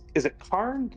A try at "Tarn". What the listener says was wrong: Tarn. You're saying his name wrong. It's Tarn with a T. Brask Tarn.